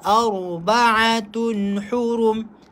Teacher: ra baca tebal. Ar sebab sebelumnya berbaris fathah